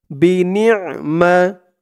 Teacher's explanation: নুন দিয়ে আইন ধরবে। আইনের উচ্চারণটা গলার ভিতর থেকে শক্ত হয়ে আসবে